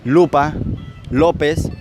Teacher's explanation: el fonema lateral que es aquel que se produce un rozamiento contra la cavidad bucal dentro de este fondo que encontramos únicamente la l lupa lópez